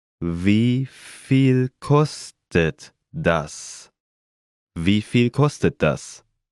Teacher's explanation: Note the rising intonation.